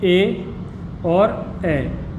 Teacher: कंठ और तालु दोनों का प्रयोग जब होता है तो वो कंठ तालव्य कहलाते हैं। इसके अंतर्गत भी दो स्वर आते हैं, ए और ए।